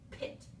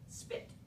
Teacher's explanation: the S sound used up some of the air pressure that you built up, so you don't have as much air to make the P sound